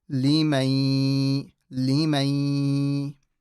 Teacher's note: So you don't actually say the nun, but the gunna of the nun still remains.